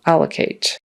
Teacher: with the syllable stress on the first syllable, allocate. It's not allocate or allocate.